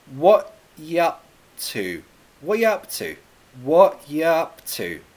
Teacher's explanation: the you and up they get contracted to yep · I say this with a glottal T, what, and then this gets contracted to ya, what ya, what ya up to.